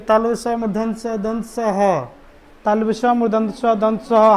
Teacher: मुंह पे हाथ रख के बोलते हैं तो गर्म हवा आती है, इसलिए इसे क्या बोलते हैं? उष्म बोलते हैं।